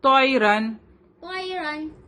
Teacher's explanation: را کے اوپر دو زبر ہے تو یہاں پہ را ہیوی ہوگا